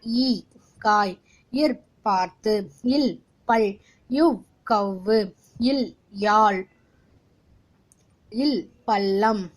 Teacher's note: இவை வல்லினம் பிறக்கும் இடமான மார்புக்கும் மெல்லினம் பிறக்கும் இடமான மூக்கிற்கும் இடைப்பட்ட இடமான கழுத்திலிருந்து பிறக்கின்றது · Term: இடையின எழுத்துக்கள்